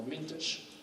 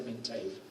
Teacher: esa segunda vocal es una vocal reducida, es una schwa